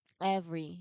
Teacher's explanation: You have the V right in the middle, and you can feel how the vibration connects the two parts of the word.